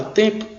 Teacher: a consoante t a vogal nasal em a consoante p e a vogal o